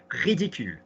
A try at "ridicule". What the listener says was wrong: I can't hear the r.